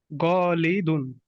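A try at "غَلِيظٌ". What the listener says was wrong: গলি দুন কেন? এখানে দত পাইছো?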